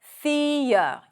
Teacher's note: The next hated word is theory, probably because of the TH. Stick the tongue out, the, and then we have a schwa sound.